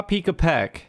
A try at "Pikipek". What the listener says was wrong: Pikipek. Pikipek. Pikipek. No, there's no A in there. No, either Pikipek Pikipek.